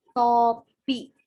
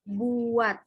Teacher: Pada kata topi, fonem T dilafalkan lepas, namun jika berada di akhir kata, fonem T tidak diucapkan lepas. Bibir kita masih tetap rapat tertutup saat mengucapkan bunyi.